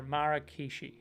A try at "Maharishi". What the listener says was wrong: Maharishi. There's no K in there.